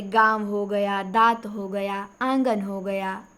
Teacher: अनुनासिक का उच्चारण नाक और मुंह दोनों से होता है।